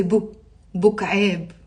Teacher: in villages they would say maybe Bu instead of Abu